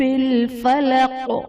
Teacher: با حرف قلقلہ مشدد ہے، یہاں پر با پر جماؤ دیں گے، اور فلق وقف کی صورت میں قاف حرف قلقلہ ساکن ہو جائے گا، تو یہاں پر ہم نے قلقلہ خوب ظاہر کرنا ہے